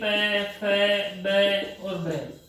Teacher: प, फ, ब और भ, ये ऐसे वर्ण हैं जिनको हम होठों को ऐसे टच करे बिना नहीं बोल सकते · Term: प वर्ग